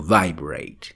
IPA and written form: ˋvaɪbret (vibrate)